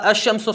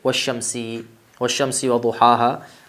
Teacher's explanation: اگر ہم کلام کی ابتدا الشمس سے کریں تو یہاں پہ حمزہ پڑھا جائے گا، لیکن جب اس سے پہلے کوئی حرف آ جائے گا تو یہ گر جائے گا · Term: حمزہ وصل